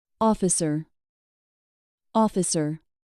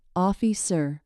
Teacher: In officer, the stress is on the first syllable